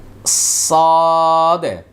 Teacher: সদ বলার সময় আওয়াজটা মোটা হবে এবং ভিতরে বাতাসটা কন্ট্রোল করতে হবে